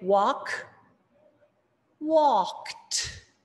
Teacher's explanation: when we have a verb that ends in a voiceless sound, like the k sound, we just match that with the T sound, which is also voiceless. T, t, t. The t, t is not a d, d, right?